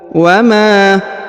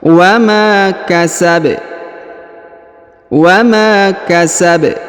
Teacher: huruf Ma dibaca Dua harakat ya karena di depannya terdapat Alif